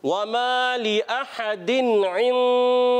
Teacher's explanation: आइन हुर्फ़ हल्की में से है, इसलिए यहाँ पर गुन्ना नहीं करेंगे। · हुर्फ़ इख्फ़ा में से आने की वजह से यहाँ गुन्ना करेंगे। ठीक है, खड़ी हरकत को एक अलिफ खींच कर अदा करेंगे।